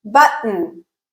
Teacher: So for a glottal stop, you are completely closing your vocal folds, allowing pressure to build up underneath them, and then explosively opening them again. A glottal stop is an unvoiced sound. It's voiceless. · In the case of a glottal stop, as the name suggests, the place of articulation is the glottis. Hence, the constriction is happening at the level of the glottis.